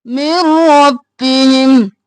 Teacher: मीम को रॉ में मुदगम किया बगैर गुन्ना के , मिर रॉ मोटा, मिर रब्बिहिम, रॉ भी 2 बार, बा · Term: इदगाम बिला गुन्ना